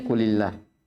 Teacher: dibaca tipis lamul jalalahnya ketika sebelumnya didahului kasrah atau ketika sebelumnya ada harokat kasrah.